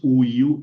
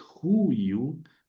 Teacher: pongo el espíritu rudo sobre la segunda, pero siempre lo pronuncio antes de la palabra